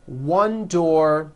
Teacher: one door-to-doors with a voiced Z ending